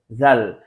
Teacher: তারপরে আসছে হচ্ছে জাল। জাল, এই হরফটা উচ্চারণ করার সময় আমাদেরকে খেয়াল করতে হবে আমাদের জিহ্বা যেন কোনোভাবে উপরের দাঁতের সাথে স্পর্শ না হয়, তাহলে উচ্চারণ হবে জাল।